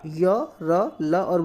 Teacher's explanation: इनको उच्चारण में हमारी जो जीवा है वो मुख के किसी भाग को पूरी तरह स्पर्श नहीं करते, सिर्फ छू के चली आती है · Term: अंतस्थ